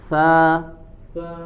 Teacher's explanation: posisi makhrajnya ujung lidah ditempelkan ke ujung gigi gusi bagian atas. Coba sekali lagi, sa, mengalirkan angin, sa, karena dia memiliki sifat hams. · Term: huruf lsawiyah, huruf lasawiyah